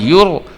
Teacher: یا پیش را یر، زا زبر زا، یر زا، اس کو یورو اس طرح زیادہ آپ نے ابھار دیا تو یہ پھر قلقلہ چلا جائے گا، جبکہ را جو ہے وہ حروف قلقلہ میں سے نہیں ہے، اس لیے آپ نے اس کو آواز کو اپنے کنٹرول میں رکھ کے موٹا کر کے پر کر کے پڑھنا ہے، آپ نے آواز کو چھوڑنا نہیں ہے۔